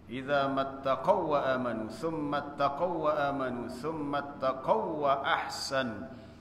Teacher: setiap kali kita baca perkataan tsumma taqaw, kita kena kena tekan sebab di akhir tu waw tu kita kena idghamkan, masukkan terus waw yang selepasnya